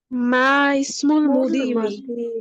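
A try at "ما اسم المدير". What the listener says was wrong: মার পরে কি ইসমুলের হামজার উচ্চারণ থাকবে? মাসমুল মুদিরি অর্থ প্রধান শিক্ষকের নাম কি? ইসমুল মুদিরি, এদের মধ্যে সম্পর্ক মুদাফ মুদাফ ইলাইহি। মুদিরিটা মুদাফ ইলাইহি আর ইসমুটা মুদাফ, এজন্য মুদিরি হবে।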